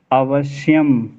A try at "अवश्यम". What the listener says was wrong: अवश्य में दो सा बोलिए।